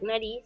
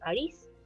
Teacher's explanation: tenemos la omisión el niño en vez de decir nariz dice aris